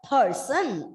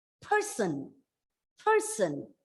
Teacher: the first syllable has to be stressed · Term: contrast and pronunciation